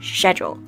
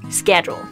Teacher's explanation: So the British use a soft sh sound, schedule, and the Americans use a sk sound, schedule.